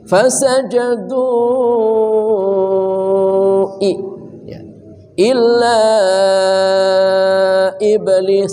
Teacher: Mad tabi'i bertemu hamzah di lain kata dibaca 4 harokat. 4 harokat itu sama dengan 2 alif. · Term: mad jaiz munfasil